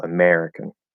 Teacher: American is stressed, and it's stressed on the second syllable